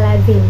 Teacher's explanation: dibentuk dengan cara pembentukan es tetapi dengan pita suara bergetar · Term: konsonan fricative alveolar